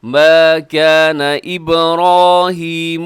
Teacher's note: را موٹا رکھیے گا